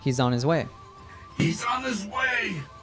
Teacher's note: H sound when saying the pronouns his her or him also there's a z sound from he's that gets linked to on · you'll sometimes hear natives drop the H sound when saying the pronouns his her or him also there's a z sound from he's that gets linked to